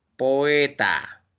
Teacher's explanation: La o es vocal abierta, la e es vocal abierta. Entonces, dos vocales abiertas se tienen que separar.